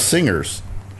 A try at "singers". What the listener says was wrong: You're saying it the same way as you say finger. You're saying singers, too. Finger, singer. What the hell's wrong with you and your Jersey accent? Singer.